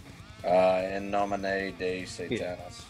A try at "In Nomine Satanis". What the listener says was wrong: There's no day in there, just in nomine.